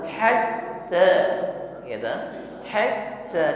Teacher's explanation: perhatikan ketika menekan huruf ta yang bertasydid di sini nampak sifat syidah tertahan aliran suara Hatta ya to Hatta Kenapa bisa tertahan karena makhrajnya tertutup dengan